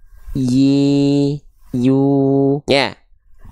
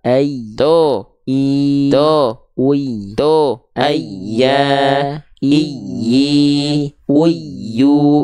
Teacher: huruf ya jadi tengah lidahnya naik